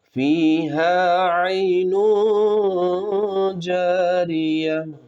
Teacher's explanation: عین ہے، پھر اخفا ہے آگے، اخفا میں نون کی آواز کو ناک میں چھپا کر پڑھیں گے، را باریک ہوں گی۔